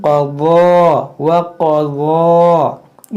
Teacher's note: जब बाद लोग यहाँ पर एक गलती करते हैं, गलती क्या करते हैं कि इसको ज़्वाद पढ़ते हैं, वो पढ़ते हैं कज़ा, व कज़ा रब्बु का, तो ये कज़ा नहीं है, ये ज़्वाद नहीं है, ये वाद है। वाद को थोड़ा मोटा करेंगे और इसको वाद और ज़्वाद में बहुत फ़र्क है, तो इसको आप पढ़ें क़ज़ा व क़ज़ा, इस तरह से।